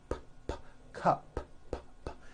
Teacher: It ends with an unvoiced P.